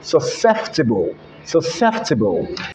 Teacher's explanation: mr president replaced a p there with an f